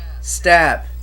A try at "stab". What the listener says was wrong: You're saying weird like with an E. Stab. how that one dude on YouTube says bitch with an E. Betch.